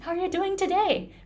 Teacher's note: the final syllable in the final word is pronounced much much longer than the rest of the sentence so this part is eight and everything else will become two